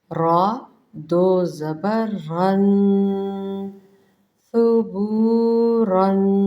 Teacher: را کو پر پڑھا جاتا ہے، نمایاں پڑھا جاتا ہے۔ را دو زبر رن، ر ر صحیح طریقے سے ادا کیجیے گا۔